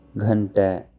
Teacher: This is the aspirated Ga sound used to write Sanskrit words